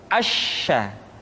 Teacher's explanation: Sya dikeluarkan dengan cara mengangkat tengah lidah kita ke langit-langit. Asya. Dan sifat yang dimiliki oleh huruf sya yang paling nampak adalah apa yang disebut dengan sifat at-tafashi, yaitu menyebarnya angin di dalam mulut kita.